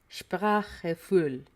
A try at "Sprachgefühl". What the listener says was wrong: Yeah, but also pronounce the G. But not like Gefühl.